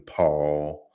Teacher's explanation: that's a voiceless bilabial plosive